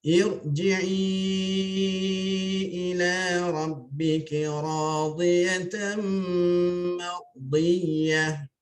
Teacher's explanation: Irji'i, ra kena tebal lah ya. Sebab kalau segi kaedah didahului oleh hamzah wasal ya. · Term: Ra tebal